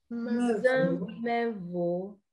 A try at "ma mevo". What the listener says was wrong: Non, toi tu dis mevo. Moi je dis ma, mevo.